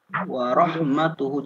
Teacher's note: hu-nya yang panjang, ta-nya tidak dipanjangkan